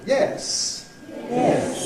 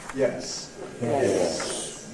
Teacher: the high fall starts high, the low fall starts not so high. They both go down to the bottom.